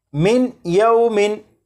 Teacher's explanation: जब नून साकिन के बाद या हरूफ यरमलून में से है तो नून साकिन को या में इदगाम करके पढ़ेंगे, मिलाकर पढ़ेंगे